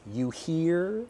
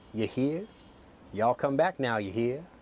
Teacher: I pronounce my R very, very strongly.